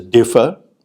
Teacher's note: let's take a look at word a word such as differ the first syllable is stressed so you say that the word differ has two parts to it two syllables one is d and the other is fur now this was